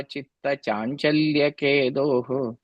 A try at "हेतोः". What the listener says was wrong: That third line, last word, it's a ha sound. Hetoho.